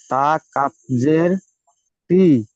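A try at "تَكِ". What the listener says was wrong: কিত। কাফ তাজের, তা কাফ জের নয়, কাফ তাজের।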